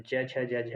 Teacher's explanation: तालव्य वर्ण में च वर्ग के सभी व्यंजन